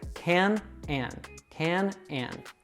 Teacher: So we have two very similar sounds there, can and. So we pronounce that short A sound with the mouth relaxed and just slightly open.